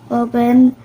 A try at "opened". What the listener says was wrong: The learner mispronounced opened as open, omitting the final ed.